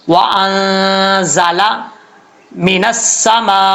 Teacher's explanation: نون ساکن کا اخفاء ہو رہا ہے، غنہ کریں گے، زا سیٹی کے ساتھ پڑھا جائے گا ، وَأَنزَلَ مِنَ السَّمَاءِ، سین سیٹی کے ساتھ پڑھا جائے گا،